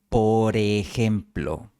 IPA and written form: po.ɾe'xem.plo (por ejemplo)